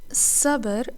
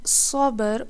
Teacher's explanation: A very clean and useful pair to explain this concept is Sabr with a Sin, which means to examine or to explore, and Sabr with a Saad, which means to be patient. Now, Sin here is light and Saad is heavy